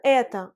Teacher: Parce que en russe, les voyelles le O sans accent tonique se prononcent A. Et dans les formes этот, это, эти, l'accent tonique frappe la voyelle E. · Et dans les formes этот, это, эти, l'accent tonique frappe la voyelle E. Et sans accent tonique, la voyelle O se prononce A.